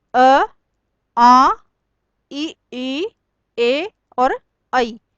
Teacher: अवृत्तामुखी या अवृत्ताकार। होठ गोल न होकर फैल जाते हैं